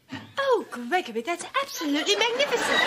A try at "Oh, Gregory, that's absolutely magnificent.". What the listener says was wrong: Not with the accent, you silly twit. Yes, you are.